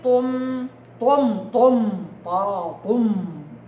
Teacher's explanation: طرف لساني ما بيستخدموش في الطاء